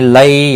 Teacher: یا لین ہے، تھوڑا نرمی کے ساتھ کھینچ کر ادا کریں گے